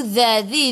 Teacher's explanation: Hujung lidah keluar pada gigi depan.